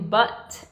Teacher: o T em português, que é ch, não é o T em inglês, que é t